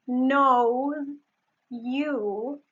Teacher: And in the end it is actually more convenient to pronounce it like that. It is actually easier for the tongue to pronounce it as | ʒ | instead of | z |. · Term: assimilation